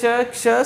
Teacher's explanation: या वर्णांचा उच्चार करताना मुखातून हवा जोराने बाहेर फेकली जाते आणि घर्षणामुळे उष्णता निर्माण होते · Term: उष्मे